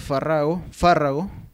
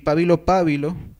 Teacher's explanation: que se suelen pronunciar esdrújulas, aun cuando eran llanas en latín